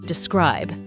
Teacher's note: we stress the word on the second syllable.